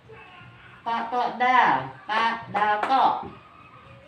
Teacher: Ujung lisan dengan pangkal gigi seri atas.